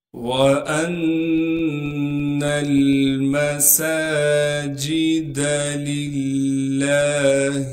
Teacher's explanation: سے ملائیں گے اس لیے کہ نون پر تشدید ہے اور نون پر تشدید ہونے کی وجہ سے غنہ کریں گے یعنی ناک میں آواز کو لے کر جائیں گے